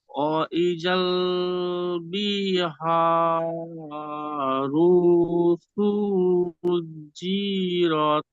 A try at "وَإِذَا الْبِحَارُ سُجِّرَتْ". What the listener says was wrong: হ্যাঁ, আপনি পড়েছেন মাশাআল্লাহ, খুব সুন্দর, কিন্তু টানের একটু গন্ডগোল হয়েছে। ওয়া ইজাল বলে এখানে অনেকক্ষণ থেমেছিলেন। বিহা, হাকে টান দিয়েছেন, হা এখানে ঠিক আছে মাশাআল্লাহ, আলিফ মাদ্দা। তারপর র টান হয়ে গিয়েছে এখানে, বিহারু বলে টান দিয়েছেন, র পে শুধু হারাকাত, বাকিগুলো টান হবে না, বুঝতে বি টান হচ্ছে, বাজের বি হারাকাত আছে। ওয়া ইজাল বিহারু সুজ্জিরত